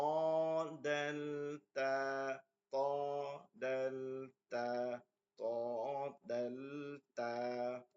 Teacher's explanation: জিহ্বার আগা সামনের উপরের দুই দাঁতের গোড়ার সঙ্গে লাগিয়ে সামনের উপরের দুই দাঁতের গোড়ার সঙ্গে লাগিয়ে ত তদাল তা তদাল